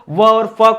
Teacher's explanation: दंतोष्ठ में व आता है और फ आता है